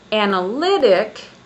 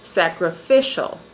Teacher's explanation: my voice goes up and my pitch level goes up on the third syllable. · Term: stress